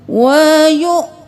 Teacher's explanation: یا پیش حمزہ یو، تھوڑا سا جھٹکا دیں گے